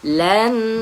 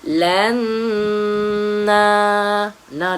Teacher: Nun yang bertanda sabdu kena dengung sikit dua harakat dan panjang pula dua harakat.